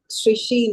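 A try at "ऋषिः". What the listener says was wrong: Rishi. Rishihi. Rishihi. You have to say the visargaha there. Rishihi.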